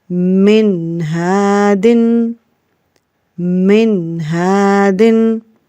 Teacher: Again the ha coming after noon sakin, it is one of the izhar letters, so this is why we have no gunna here.